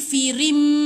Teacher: Jadi ri tu matikan dengan mim. Ya. Tutup je rapat bibir. Lepas tu tahan 2 harakat. Iqlab nama dia.